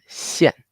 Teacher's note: The tone mark tells you to go down, to be angry.